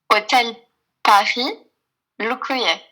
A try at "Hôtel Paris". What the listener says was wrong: Alors, on va changer quand même l'accent. On va pas dire Paris, il va pas forcément comprendre. On va mettre à l'anglaise.